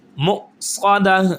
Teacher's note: حمزہ پر جھٹکا دیں گے، منہ سادہ نہیں کریں گے